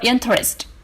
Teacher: the stress for interest is on the first syllable